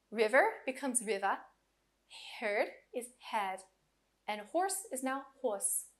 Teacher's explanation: in some dialects such as the South Boston and New York the r is much weaker and is sometimes dropped like in British English